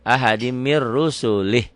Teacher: nun mati ketemu ro, idgham bila gunnah